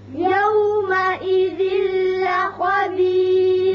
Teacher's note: یہاں تنوین کے بعد لام ہے، ادغام بغیر غنہ ہوگا.